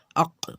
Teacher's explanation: جڑ زبان تالوں سے مل کر قاف ادا ہوتا ہے